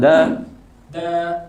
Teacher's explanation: Fathah bertemu alif panjang dua harakat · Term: Mad thobii